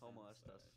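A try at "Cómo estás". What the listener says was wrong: Como estas, not homo.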